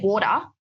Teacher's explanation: So we have like a T flap, which is kind of similar to your glottal stop. So we don't completely cut out the T, but it's really, really light.